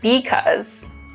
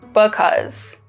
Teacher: another remarkable feature of chicano english is that there's less vowel reduction